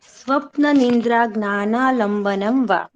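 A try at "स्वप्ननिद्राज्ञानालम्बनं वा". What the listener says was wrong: हाँ, सुंदरम। और एक कोई बालक कर दे।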